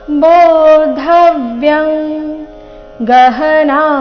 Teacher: ಅನುಸ್ವಾರದ ಉಚ್ಚಾರಣೆ ಇಲ್ಲಿ ಕ ವರ್ಗದ ಅನುನಾಸಿಕ ಗ ರೀತಿ ಯಾಕಂದ್ರೆ ಮುಂದಿನ ಶಬ್ದ ಗಹನ ಅಂತ ಬಂದಿದೆ ಗ ದಿಂದ ಪ್ರಾರಂಭ ಆಗ್ತಾ ಇದೆ ಕ ಖ ಗ ಘ ಈ ವರ್ಗದ